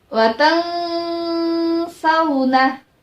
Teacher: nun mati bertemu dengan huruf sa. Sama, masih tetap samar karena ikhfa itu adalah samar-samar